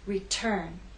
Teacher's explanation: Return has two syllables, but it's the second syllable that is stressed. T is at the start of that syllable, so we say return.